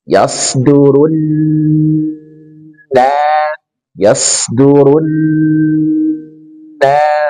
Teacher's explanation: Dan di kata ini nunnya bertasydid, maka tahan 3 harokat.